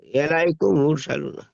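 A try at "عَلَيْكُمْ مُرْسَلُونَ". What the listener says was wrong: তাড়াতাড়ি হয়ে গেল, একটু গুন্না করে পড়েন, টান দিয়ে পড়েন। ইলাইকুম, জি, একটু টান দিয়ে, কোরআনটা হলো সুর দিয়ে, কোরআন হলো সুরের ভাষা, সুর দিয়ে পড়তে হবে, টান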